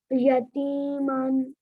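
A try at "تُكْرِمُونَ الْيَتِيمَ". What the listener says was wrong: یتیم، من کیسے بنے گا؟ تکریمون الیتیم۔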